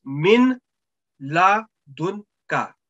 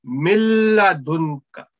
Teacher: Look, this meme carrying sukoon sign, and we say if meme noon sakin is followed by a letter ra and lam, then with assimilation will take place without nasal sound